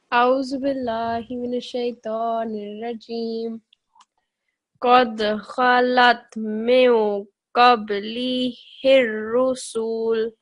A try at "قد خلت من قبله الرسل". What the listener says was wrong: Okay, just over here on the scene, it was a little bit longer than 1 second, so just make it shorter. So قبله الرسل. And also on this noon, you made the nasal sound great, but just prolong it a little bit longer. So قد خلت من قبله الرسل. من قبله.